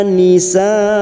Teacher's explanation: Nisa ini mad wajib mutasil, bertemunya mad dengan hamzah dalam satu kalimat.